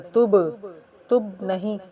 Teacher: با پہ حروف قلقلہ میں سے ہے اور با یہاں پر ساکن بھی ہو رہی ہے، تو یہاں پر قلقلہ کر کے پھر پڑھیں گے